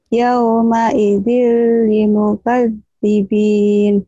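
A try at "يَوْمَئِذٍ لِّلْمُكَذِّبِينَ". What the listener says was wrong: Lil dulu kan ini ada. Jadi lamnya jadi tiga. Yauma idil lil mukadzibin. Yauma idil, idilnya tanwin ketemu lam.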